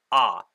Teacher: when we just pronounce a vowel on its own, we have a glottal stop and then we say the vowel.